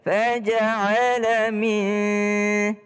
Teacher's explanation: Faja'ala min, nun ketemu dengan dal berdengung.